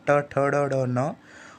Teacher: ये मूर्धा के द्वारा इन वर्णों का उच्चारण होता है, तो इन्हें मूर्धन्य वर्ण कहते हैं।